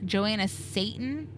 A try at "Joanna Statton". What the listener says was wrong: You need to pronounce that T a little better. That first one.